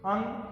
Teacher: यह स्वर के बाद आने वाला व्यंजन है, इसकी ध्वनि नाक से निकलती है, अतः इसे नासिक व्यंजन भी कहते हैं। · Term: अनुस्वार